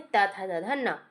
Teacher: जो दंत ध्वनियां हैं उसके अंतर्गत आपकी आ जाती हैं त, थ, द, ध, न